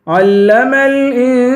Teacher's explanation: عین کو لام سے ملا کر لام کو سختی کے ساتھ جمع کے پڑھیں گے. انسان، این پہ اخفا کریں گے، سین کو ایک الف کے برابر کھینچیں گے، الف حروف مدہ ہے.